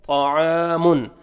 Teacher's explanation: عین کو اپنے صحیح مخرج سے ادا کر کے الف مدہ، عین کو اپنے 1 سیکنڈ کھینچنا ہے